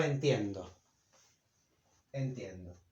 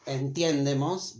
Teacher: when the syllable that contains the e in the root, this e, entender, is stressed, now we have to change it for a diphthong